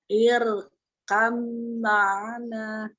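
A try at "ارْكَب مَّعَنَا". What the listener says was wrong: Ya, roknya coba ditebalkan lagi takdim, rok sukunnya. Irkam ma'ana. Gunahnya ditahan lagi, gunahnya lebih lama. Irkam ma'ana. Iya, mim tasdid. Ya, irkam ma'ana gitu ya.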